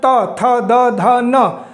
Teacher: त की जब आवाज निकलती है तो जीव दांतों को टच करती है तभी निकल करके आती है तो इसे दंत व्यंजन भी कहते हैं ठीक दंत व्यंजन प